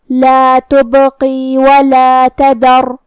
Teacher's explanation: کلمت تذر میں یہاں ہمیں دال کو زبان کے سر اور اوپر والے دانتوں کے اندرونی کناروں سے ادا کرنا ہے۔ آخری میں حرف الراء کو بھاری آواز میں پڑھیں گے۔